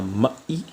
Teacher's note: Attention, hein, c'est mai et non pas maï, qui veut dire carrément autre chose. Maï, c'est M-A glottal I. Alors que là, c'est maï tout court, M-A-I.